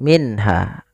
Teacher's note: Ada dua ada nun sukun bertemu dengan huruf H. Suara nunnya harus dibaca dengan jelas, tidak boleh ditahan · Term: izhar halqi